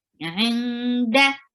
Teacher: you are hiding the sound of noon because there is ikhfa